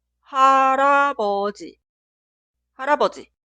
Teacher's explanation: 리을 como consonante inicial suena R entre las vocales, como R en cara, toro, iris.